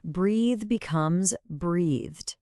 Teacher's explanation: English actually has two TH sounds. In a verb like breathe, the TH is voiced, your throat is buzzing. So following our logic, we just add a D for the past tense.